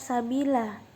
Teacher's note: Ini adalah contoh mad tabi'i dalam surat Abasa sebab ada huruf ya di kasroh. Panjang mad tabi'i adalah satu alif atau dua harokat.